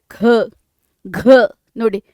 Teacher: ಮಹಾಪ್ರಾಣ ಅಂತ ಹೇಳ್ತೀವಿ ಜಾಸ್ತಿ ಉಸಿರು ಕೊಟ್ಟು ಹೇಳುವಂತದ್ದು ಯಾವುದಪ್ಪ ಅಂದ್ರೆ ಖ ಘ ನೀವು ಹೇಳಬೇಕಾದ್ರೆ ತುಂಬಾ ಉಸಿರು ಕೊಡ್ತೀವಿ